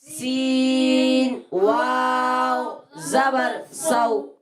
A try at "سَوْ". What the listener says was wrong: جھٹکا نہیں دے گے. سو ایسے نہیں بلکہ نرمی سے سو. سو.